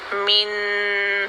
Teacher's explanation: वैसे हम नून साकिन को पढ़ते हैं तो पढ़ते हैं अल मीम नून ज़ेर मिन, और हमारी ज़बान नीचे से उठती है और ऊपर गम लाइन में टच करती है